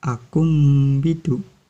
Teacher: Cara membacanya mengganti suara ba menjadi suara mim. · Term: iklab